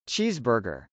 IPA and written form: tʃˈizbɚgɚ (cheeseburger)